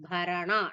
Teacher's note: na is a dirgham and bha is a mahaprana